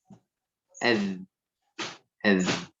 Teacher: Za itu di ujung lisan, taraful lisan